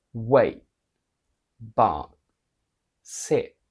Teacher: The stop T is created when you just bring your tongue to your alveolar ridge, but then you do not release it. It's like, so your tongue is pushing, but no sound is coming out.